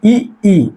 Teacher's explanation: तालव्य का मतलब तालु, जीभ कहाँ जाके टच होगी, तालु में। जैसे ई इसका उच्चारण करिए, आप स्वयं करके देखिए। · ई इसका उच्चारण मतलब जीभ कहाँ टच हो रही है, तालु में। तो इसको हम क्या कह सकते हैं, तालव्य स्वर कह सकते हैं।